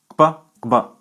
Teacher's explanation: Some other interesting consonants in Yoruba are velar labial stops, kp and kb. They have a double articulation at the lips and at the back of the roof of the mouth, kp, kb. The letter P in writing represents the sound kp.